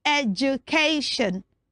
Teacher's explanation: The D in that word makes the sound j